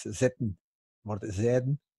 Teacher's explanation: De T van het Gens wordt heel vaak een D in het Zwijnaards.